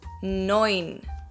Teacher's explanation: the e and u in german is pronounced as an oi